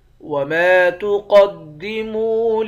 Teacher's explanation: قاف کو موٹا پڑھیں گے، میم کو واو کے ساتھ ملا کر واو کو بھی ایک الف کے مقدار کھینچیں گے، واو حرف مدہ ہے۔